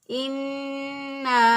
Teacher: گنہ کہتے ہیں ناک میں آواز ٹھہرانا، ناک میں ایک الف کے برابر ناک میں نون کی آواز کو لے جانا۔ تو ناک میں نون کی آواز کو ایک الف کے برابر ٹھہراتے ہوئے ہم نے نون کو ادا کیا۔ · ہم اس کو پڑھیں گے انا، اب الف ہے تو الف مدہ، الف پہلے والے حرف پر زبر ہے اس لیے اس کو ایک الف کے برابر لمبا کر کے ہم نے پڑھنا تھا